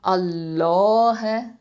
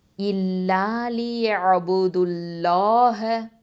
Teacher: லஃப்துல் ஜலாலா லாமை வந்து நம்ம தஃஹீமாக ஓதணும்